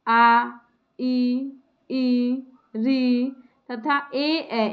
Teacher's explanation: ऐसे स्वर जिनके उच्चारण में होठ गोल नहीं होते बल्कि फैल जाते हैं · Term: अवर्तुलित स्वर